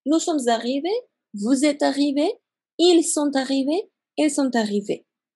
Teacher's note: hice la liaison todo el tiempo después del verbo être